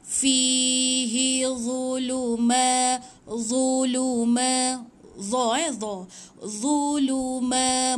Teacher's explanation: Fi panjang sebab dia ya. Hi tak panjang.